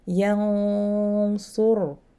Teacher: Meaning, when I have those letters before a tanwin or after a noon and or a tanwin, I have to elevate the back of the tongue when I am doing the ghunna sound. So the sound will change, but I should leave the letter before light. · I say ya clear, and then I go to elevate my tongue while I am doing the nasalization, and then I pronounce the su. So yansurkum, this is the way. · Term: heavy ikhfa